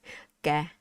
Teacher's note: Just say ga. No air, right? Don't be fancy. Stop all the air.